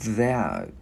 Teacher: Chữ D mình đưa lưỡi qua giữa hai răng ép rung